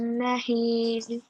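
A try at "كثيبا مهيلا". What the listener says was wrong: مهيلا. When there's the alif in the end, you have to pronounce it mahila.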